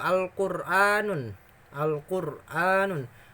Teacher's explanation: Ro-nya mati, sebelum ro mati ada domah, masuk kategori tafkhim, tebal. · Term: ro tafkhim